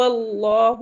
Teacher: لام کے اوپر کھڑا زبر ہے تو اسے 2 کاؤنٹ پڑھیں گے کیونکہ مد حکمی مد اصلی کے برابر ہوتے ہیں۔